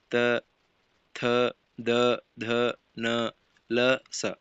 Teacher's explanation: ಹಲ್ಲುಗಳ ಬಳಿ ಹುಟ್ಟುತ್ತವೆ ಹಲ್ಲುಗಳ ಬಳಿಯೇ ಹುಟ್ಟುತ್ತವೆ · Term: ತಂತ್ಯ ಅಕ್ಷರಗಳು